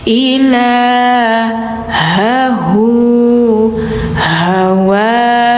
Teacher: meskipun bentuknya beda, tapi di sini makhrajnya di tenggorokan dalam semuanya.